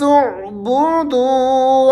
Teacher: دو آگے آپ نے واو مدہ ہے، دو کو تھوڑا سا آپ نے کھینچنا ہے